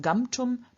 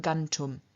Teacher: the M, the labial nasal, just turns into the dental nasal in front of the dental T, in front of the dental stop T, so we don't have gumtum, but we have gantum.